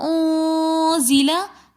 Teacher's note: نون ساکن کے بعد اخفا کے 15 حروفوں میں سے زا آ رہا ہے تو انزلہ ہم یہاں پر غنہ کریں گے